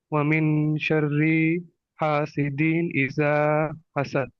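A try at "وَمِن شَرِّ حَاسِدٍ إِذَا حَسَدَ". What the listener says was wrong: আচ্ছা, এখানে তুমি ওয়ামিন শাররিতে কেন টান দিছো? টান হবে না। ওয়ামিন শাররি হাসিদিন ইযা হাসাদ। ওয়ামিন শাররি হাসিদিন ইযা হাসাদ। গুণা, ওয়াজিব গুণা ছাড়া টানগুলা দিও না আর কি।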